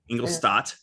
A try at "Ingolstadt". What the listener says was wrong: T at the end. No P.